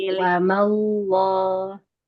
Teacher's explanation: Alif setelah huruf lam dilafaz Allah. Alif jadi tebal juga.